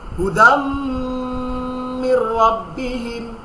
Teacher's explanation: মিমে তাসদীদ হলেই সাথে সাথে গুণনা হবে নাকের মধ্যে, নাকের মাসি থেকে উচ্চারণ হবে হুদাম মির রাব্বিহিম।